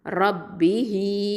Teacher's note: ஹ கெஸ்ரா யா சகிரா ஹி 2 ஹரக்கத்தை நீட்டணும்